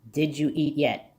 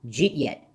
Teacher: One might hear a J sound, but the speaker is running a D and a Y, so it only resembles a J sound.